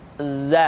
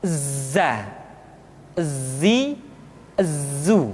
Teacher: dalam huruf latin tetapi ingat huruf dza bersifat Al Jabbar artinya ketika kita mengucapkan huruf dza suara kita mengalir akan tetapi nafas tidak boleh mengalir